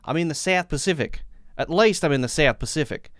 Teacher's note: all I know is I got to go up at the end of each phrase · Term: question tone